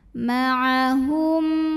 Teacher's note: Karena mim sukun menghadapi huruf yang bukan mim, bukan juga ba. Maka kita bunyikan mim sukun ini dengan jelas. Jadi bunyinya masih bunyi asal, bunyi M, dan jangan ditahan. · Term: izhar syafawi